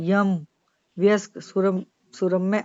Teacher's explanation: फिर एक प्रकार के ए जैसी ध्वनि आती है। जिह्वा का मध्य भाग उठकर कठोर तालु के बहुत पास आ जाता है। यह सघोष ए वृत्ताकार तालव्य ध्वनि है। · देखते हैं यह ध्वनि। यह ध्वनि उच्चारण के लिए पहले तो जीभ ई जैसी ध्वनि के लिए तैयार होती है। फिर एक प्रकार के ए जैसी ध्वनि आती है। जिह्वा का मध्य भाग उठकर कठोर तालु के बहुत पास आ जाता है। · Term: अर्ध स्वर